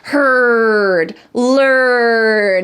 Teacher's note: In American English, this R sound in herd and learn is called a colored R. It is very strong. Imagine you're an angry dog, heard, learn.